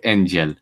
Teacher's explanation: Yeah, because thing is, what that is, it's called palatalization. And so the G became an English yes sound, or it could be like a j sound